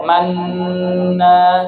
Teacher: Ya, jadi idgham ma'al ismam. Jadi manna, bunyi nu-nya enggak ada. Cuman isyarat bibir monyong aja.